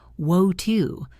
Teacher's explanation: In British English, it sounds more like wo-two with a crisp T sound.